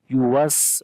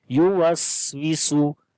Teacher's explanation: اس کو لمبا کرتے ہیں ایک الف کے برابر، الذی یوسوسو، سین کے اندر صفت ہمس ہوتی ہے، یعنی کہ سانس جاری ہوتا ہے اور اس کے اندر کمزوری آ جاتی ہے ، یوس، اور سیٹی کی بھی آواز آتی ہے، یوسوسو، فی،